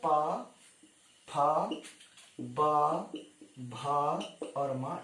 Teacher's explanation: ये होंठ से बोले जा रहे, बिना ओंठों को जोड़े आप बोल नहीं सकते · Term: ओष्ठ से